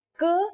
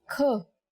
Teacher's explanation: For example, k is a consonant, and when we say it with aspiration, it becomes another consonant kh